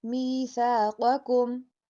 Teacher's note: قاف کو موٹا پڑھا جائے گا